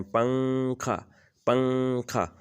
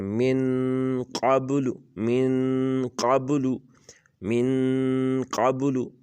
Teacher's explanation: تنوین یا نون ساکن کے بعد حروف اخفا آ جائیں، اگر نون ہو یا تنوین ہو، اس کے بعد ان حروف میں سے کوئی حرف آ جائے تو نون کی آواز کو ناک میں چھپا کر پڑھا جائے گا، نوک زبان تالو سے ہٹا کر